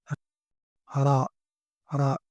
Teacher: you do a vibration with a soft vibration with your tongue on the upper of your mouth